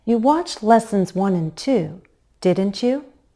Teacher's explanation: And I stress my helping verb, didn't you? There's a slight pause after the statement and before the tag question.